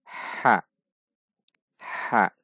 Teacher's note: LH selanjutnya huruf H perhatikan sifat dan makhraj huruf A itu dari tengah tenggorokan dan dibaca istifal Dibaca tipis dan halus